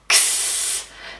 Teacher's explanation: it actually sounds like a K and an S. Ks, said really closely together.